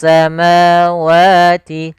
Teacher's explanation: pada lafal ma wa ini ada mad th'i. Kita panjangkan sepanjang dua harakat.